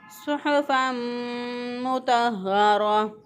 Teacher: सौद के अदायगी में होंठों को गोल नहीं करेंगे, सिर्फ जो है ज़ुबान की जड़ ऊपर के तालु की तरफ उठ जाती है और ज़ुबान की नोक जो है वो नीचे वाले सामने वाले 2 दांतों के साथ लगा देते हैं।